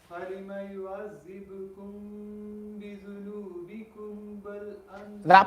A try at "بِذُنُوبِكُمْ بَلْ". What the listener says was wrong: That part, you بِذُنُوبِكُمْ بَل. You need to do ikhfa. You need to do your ikhfa there as well.